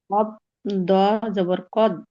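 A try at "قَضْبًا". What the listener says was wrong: দ হয়ে যাচ্ছে তো আপু, বাংলা না, এটা হচ্ছে মনে করেন আরবি পড়ছি। কফ দদ জবর কদ।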